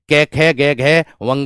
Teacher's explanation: कंठ और जीभ का निचला भाग उससे बोले जाते हैं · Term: कंठीय